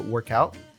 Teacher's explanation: And what happens there is the K connects, the K sound connects with out, so work out.